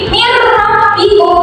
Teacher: Nah, contohnya ya, yaitu ada mirrabbikum, yaitu ada nun sukun bertemu dengan ro. Jadi nun sukunnya ini tidak dibaca tapi langsung masuk menjadi ro. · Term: idgham bila guna